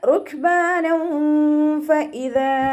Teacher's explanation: തെൻവീനിലുള്ള നൂനിൻ്റെ സൗണ്ടിനെ മറച്ചു വെച്ചിട്ട് മണിച്ചോതി കൊടുക്കുക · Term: ഇഖ്ഫാ